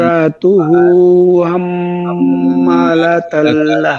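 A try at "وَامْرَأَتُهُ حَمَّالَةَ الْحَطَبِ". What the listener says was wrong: জি, হাম্মা হা উচ্চারণ হয় না, হাটাকে গলার মধ্যে ফিস ফিস করে নেয়া, বাতাস বসবে, হা হা হা হা, হাম্মা বলা যাবে না, ঠিক আছে, হাম্মা হবে নাই। وامرأته حمالة الحطب،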